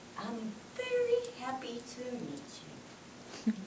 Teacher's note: i jumped up up in tone at the target word fairy without getting louder purposely and instead making myself softer and quieter and then going down in inflection same as when you read · in inflection same as when you read a book in english at the end of the sentence you go down your voice goes down from a higher to a lower inflection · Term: step up and down technique